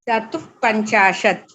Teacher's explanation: after the visarga, you are having a pa varga, a pa varna, and whenever you have pa, it is an upadhmaniya pronunciation